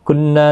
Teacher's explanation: نون مشدد پر غنہ ہوگا، نا الف مدہ بھی ہے